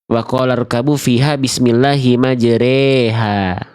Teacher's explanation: Nah, itu baru imalah. Miring dari fathah ke vokal i jadinya e.